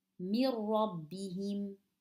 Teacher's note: We cancel the noon. We don't read it at all. We're going straight from the meme to the ra without any gunna. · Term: idgham